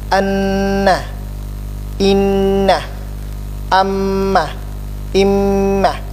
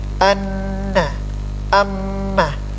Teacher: Nun dari lidah dan sisinya, ya, menyentuh langit-langit, itu ada gunahnya.